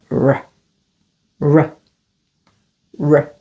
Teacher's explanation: Smooth and warm, not tapped or rolled.